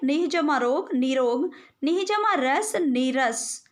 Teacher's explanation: यदि विसर्ग के बाद र हो तो विसर्ग लुप्त हो जाता है और उसके पहले का स्वर दीर्घ हो जाता है